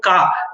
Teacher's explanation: it starts with an unvoiced occlusion, then there is a burst, and then after that there will be this voice onset time, and after that there will be that ah sound. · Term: velar sound